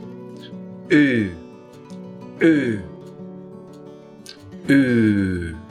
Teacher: we form it by making our lips into an even more rounded shape - really like we are puckering up to kiss someone. At the same time, the back of the tongue rises up in the mouth, even higher than with the /ʊ/ sound, and we blow a long pulse of air out of our mouth. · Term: close-back rounded vowel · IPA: /uː/